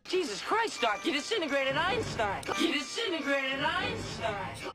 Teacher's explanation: So it's not disintegrate, it's disintegrate. It reduces from 4 to just 3 syllables, and the first T sound disappears.